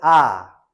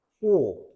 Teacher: 평평하게 입술을 만든다 해서 평순모음입니다. 아 보면 아 옆으로 이렇게 찢어지는 형태란 말이야. 오 동그랗죠.